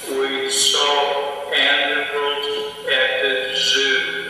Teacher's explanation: And you hear equal stress rather than the normal prosody.